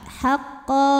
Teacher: karena ada baris tanwin fathah yang diwakafkan cara bacanya dibaca panjang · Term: Mad iwad